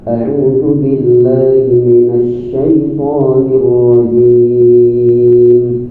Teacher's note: Hamzah itu kan huruf yang letaknya paling jauh, yaitu aqsal halqi, yaitu pangkal tenggorokan bersama huruf H. Karena dia berada paling ujung, paling jauh, sehingga di situ ada penekanan dalam pelafalannya, penekanan dalam makna kada a.